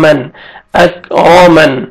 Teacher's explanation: وقف کی صورت میں جب سٹاپ کریں گے نون ساکن ہو جائے گا